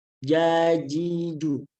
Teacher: Jadi diusahakan ketika mengucapkan huruf jim atau huruf ja itu jangan sampai ada keluar udara. Jangan ja, nah itu salah.